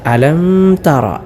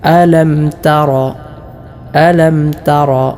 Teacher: മണിക്കാതെ വെളിവാക്കിയാണ് അഥവാ ഇളഹാർ ചെയ്തുകൊണ്ടാണ് ഇവിടെ മീമിനെ ഉച്ചരിക്കേണ്ടത് അതായത് അലംതറ അലംതറ ഇങ്ങനെ ഇങ്ങനെയാണ് ഓതേണ്ടത് അലംതറ മറ്റൊന്ന് തറ ഇവിടെ താ · അല്ലാതെ അലം തറ ഇങ്ങനെ മണിക്കാൻ പാടില്ല. മണിക്കാതെ വെളിവാക്കിയാണ് അഥവാ ഇൽഹാർ ചെയ്തുകൊണ്ടാണ് ഇവിടെ മീമിനെ ഉച്ചരിക്കേണ്ടത്.